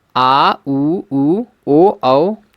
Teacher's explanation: पश्च स्वर में होता है आ उ उ ओ औ